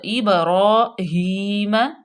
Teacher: با قلقلہ ہوگی، یہاں پہ ہم قلقلہ کریں گے، با کو ہلا کے پڑھیں گے